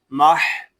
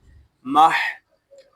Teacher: لام زبر لا، یومائی ذلہ، میم ہا زبر مح. یہاں ہا حلق کے درمیان والے حصے سے ادا ہوگا